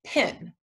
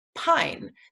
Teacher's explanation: meaning that if we add the silent e at the end the vowel sound in the middle changes from the short sound to the long sound